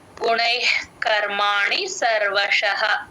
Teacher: విసర్గ H sound క ముందు ఎప్పుడు విసర్గ వచ్చిన హెచ్ సౌండ్ లాగా చెప్తాం